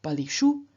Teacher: the locative plural ending su changes into shu after the vowel I, which causes internal sandhi, specifically the rookie rule.